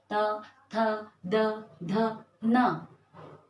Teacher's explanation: दांत पे टच हो रही है हमारी जीभ, तो त वर्ग का उच्चारण स्थान है हमारा दंत, हमारे दांत।